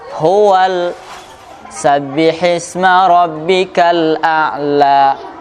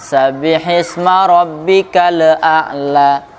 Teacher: ketika mensukunkan lamnya, jangan sampai dipentalkan. Jadi dia lewat saja.